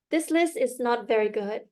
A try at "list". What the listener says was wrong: The first time you said it, it was list. I didn't really hear the T. There needs to be more emphasis on the T.